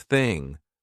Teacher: This one, however, is an unvoiced TH, so this one goes thing. No voice, there's no buzz in my throat.